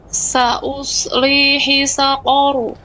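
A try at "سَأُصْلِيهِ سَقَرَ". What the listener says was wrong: Hi besar, hinya dari pangkal tenggorokan.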